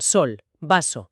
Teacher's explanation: La S, que es alveolar. La lengua se acerca a los alvéolos, el típico siseo, como en sol, vaso, también sorda.